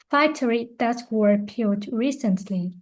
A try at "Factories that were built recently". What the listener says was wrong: No. Factories that were built recently. Ending sound. Factories that were built recently.